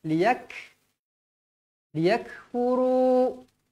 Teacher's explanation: Liyak, tuan-tuan perempuan, ambil fokus dekat huruf kaf. Liyak, ingat huruf kaf saya kata berangin. Huruf kaf berangin.